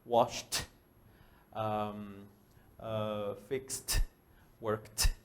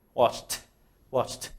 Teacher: si el verbo en presente termina con aire, ejemplo, wash, fix, work. ¿Notas el aire? La ed, cuando lo pongas en pasado, la ed se va a pronunciar como una T. Entonces sería washed, fixed, worked.